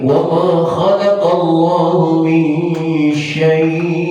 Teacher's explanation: Kalau kita berhentikan syai', maka bacanya harus dipanjangkan, terkena hukum mad lain. Tapi kalau tidak diberhentikan, maka sama sekali tidak ada panjang.